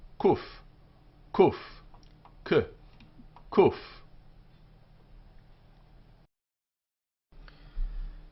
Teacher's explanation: This is a K sound, but it's slightly further back in the throat.